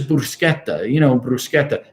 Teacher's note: You don't have to roll the R.